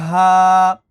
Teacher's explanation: ہا کے اوپر بھی کھڑا زبر ہے، اس کو ایک الف کے برابر کھینچیں گے